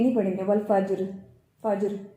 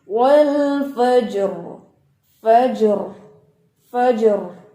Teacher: جو فا کی زبر ہے نا، یہ اس وجہ سے یہ را موٹا پڑا جائے گا